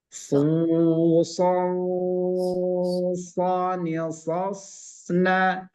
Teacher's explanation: Tanwin ketemu dengan so, suaranya samar-samar, ikhfa, dan agak diberatkan. Song, langsung kepada so.